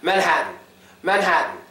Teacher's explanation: made at all it is absolutely silent Manhattan Manhattan but the n Sound is silent too for a lot of us New Yorkers · the most important part about it is the T sound is not made at all. It is absolutely silent.